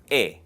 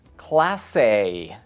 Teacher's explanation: La letra E es corta y constante. Es una vocal cerrada. E. Native English speakers often elongate it.